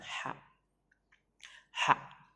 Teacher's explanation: Jadi ada angin yang keluar dari tenggorokan kita untuk mengucapkan huruf ha-nya itu.